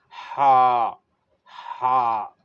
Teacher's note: یہ حلق سے نکالنا ہے